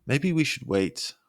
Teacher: your voice gets higher on wait to show hesitation